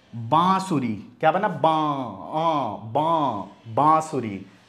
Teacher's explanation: बांसुरी में आ खींच के आया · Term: अनुनासिक